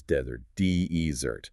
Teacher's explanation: The emphasis is entirely on the first part.